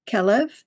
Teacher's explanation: kol means all, lev means heart. So the lamed, the L sound is overlapping between those two words